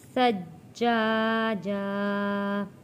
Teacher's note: جیم کے اوپر تشدید ہے، یہاں پہ پہلے ہم نے رکنا ہے